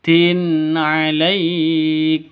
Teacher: Tanwin bertemu dengan ain, jelas terang, tidak boleh dengung, tidak boleh disentak, tidak boleh dipanjangkan. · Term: izhar halki